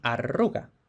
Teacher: la R contagia a la D y por eso de adruga tenemos arruga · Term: asimilación regresiva